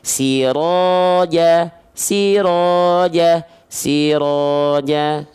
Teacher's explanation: itu nggak diayunkan dengan nada, tapi kadarnya tetap seperti 1 kali ayun alias 2 harokat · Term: mad tabi'i